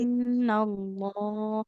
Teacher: Nunnya bertasdid kan jadinya gunah ya. Enggak boleh terlalu terburu-buru.